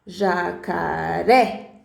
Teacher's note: então se for na última sílaba exemplo jacaré aí é uma oxítona